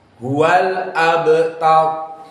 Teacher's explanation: Maka hamzah dibaca dengan tahqiq al-hamzah. Maka maksudnya dibaca tanpa macam-macam. Dibaca fathah dan jelas.